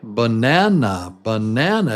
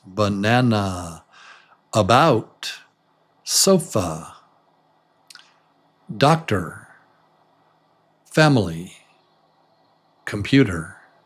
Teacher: So this the stressed vowel is little longer than the others